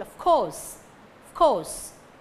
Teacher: Of can become f or v, of can become f or iv. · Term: weak form